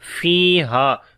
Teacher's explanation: فی یہاں پر یا مدہ ہے، ہا یہاں پر الف مدہ ہے، دونوں کو لمبا کریں گے ایک ایک الف کے برابر۔